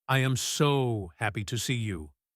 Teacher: Stretch the word so. Go up high. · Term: intonation